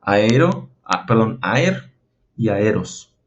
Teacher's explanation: es un espíritu suave, por lo tanto no hay que hacer una aspiración, se pronuncia tal cual, aer y aeros.